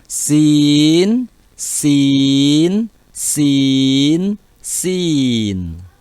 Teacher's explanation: huruf sin mengucapkannya, ujung lidah kita tempelkan di dinding belakang gigi seri yang bawah.